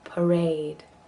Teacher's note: Another one where there are two A's, each with a different sound. So the first one is a schwa, and the second one is a diphthong